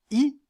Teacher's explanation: la voyelle i qui est la voyelle la plus fermée la langue remonte assez près du palais · dans le cas de la voyelle i la langue est en position avancée